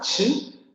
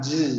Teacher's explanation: Solamente hay que sonorizar la consonante, ¿no? No va a ser una consonante sorda, ch, sino una sonora j.